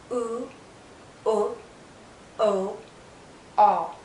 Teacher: you can't can't see my tongue because the highest point is the back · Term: back vow sounds